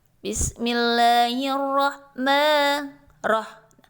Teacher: Alif dan lam yang mati di sini bertemu dengan huruf ro, maka dia tertutup karena didominasi oleh huruf ro tadi. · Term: alif lam syamsiyah